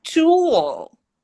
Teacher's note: they actually connect this ooh with the L through the w